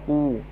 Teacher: Qul fa'tu, qul, qaf bagi depan ku. Kita akan rasa pangkal lidah kita melonjak ke atas lah.